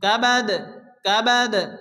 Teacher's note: দাল কলকলার অক্ষর হালকা ধাক্কা দিয়ে পড়তে হবে